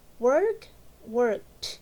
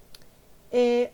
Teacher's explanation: Because remember that all the verbs that end with that voiceless sound like k, k, the sound with ed is like a T